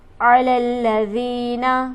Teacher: دال پر ہمارے پاس حرف مدہ موجود ہے، اسے ہم کھینچیں گے ایک الف کے برابر